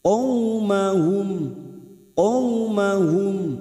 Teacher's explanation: fathah bertemu wau sukun Huruf layin layin artinya lunak maka kita lunakkan